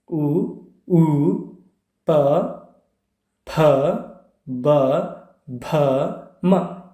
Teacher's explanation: ಹಾಗಾಗಿ ಇವು ಎಲ್ಲಗಳು ಏನಾಗಿದ್ದಾವೆ, ದಂತ್ಯ ಅಕ್ಷರಗಳಾಗಿವೆ. ಓಷ್ಠ್ಯ ಅಂದರೆ ತುಟಿಯ ನೆರವಿನಿಂದ ಜನಿಸುವ ವರ್ಣಗಳು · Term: ಓಷ್ಠ ವರ್ಣಗಳು